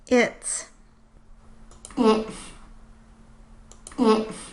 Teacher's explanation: you can again hear some frication on the S, but also the airflow through the nose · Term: nasal airflow